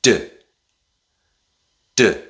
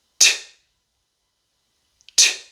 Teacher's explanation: The difference is with the d sound, you add your voice. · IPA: /d/ /t/